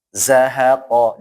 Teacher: jangan sampai ada anginnya ya, jangan qa, tapi dia itu tertahan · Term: Tertahannya udara